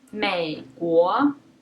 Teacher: the third tone stays very low you can think of it as a very low falling tone or just low tone